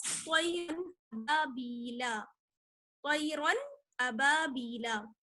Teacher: نون ساکن یا تنوین کو بغیر غنہ کے ظاہر کر کے پڑھیں گے۔ آپ کو آواز چھپانی نہیں ہے، بالکل صاف ظاہر کر کے آپ کو پڑھنا کر کے پڑھتے ہیں، اسی لیے یہ کہلاتا ہے اظہار کا قاعدہ، اظہار، ٹھیک ہے؟